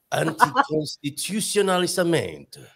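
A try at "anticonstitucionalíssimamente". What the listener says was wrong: You said anticonstitucionalissima. You skipped a syllable.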